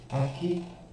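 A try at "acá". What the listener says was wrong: Aca. Não é aqui, não tem o I. Aca.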